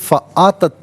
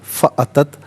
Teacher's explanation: حمزہ کو بغیر کھینچے پڑھیں گے